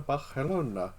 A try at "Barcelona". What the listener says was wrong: not quite. I think it's more like a th sound.